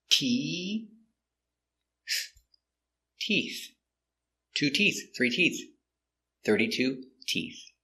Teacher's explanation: start with a t sound with our tongue inside T and we finish with the th with the tongue touching the teeth F making the air so inside T [Music] te teeth two